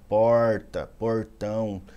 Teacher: tem regiões que falam porta marca muito R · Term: r caipira